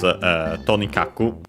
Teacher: Accented on the first syllable, so on the Tonikaku.